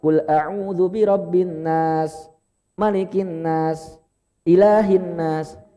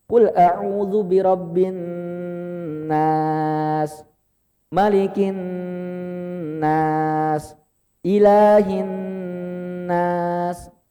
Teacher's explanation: Nunnya bertasydid, ditahan lama. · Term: gunnah